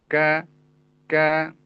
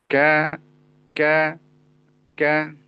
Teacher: Jadi, kaf itu sedikit masuk makhrajnya ke ee langit-langit yang bertulang. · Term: makhraj huruf kaf